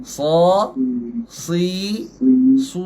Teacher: So, harakat atas buka sikit. So, harakat bawah renyih. Si. Harakat depan muncung.